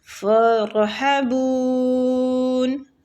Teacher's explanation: وَإِيَّايَ فَارْحَبُونَ، فرحبون را جو ہے اس کو پور پڑھنا ہے کیونکہ پیچھے والے حروف کے اوپر زبر ہے ٹھیک ہے، مطلب فتح۔ فرحبون ادھر مد عارضی سکون ہو رہا ہے، اس لیے ہم اس کو 3 سے 4 الف کھینچیں گے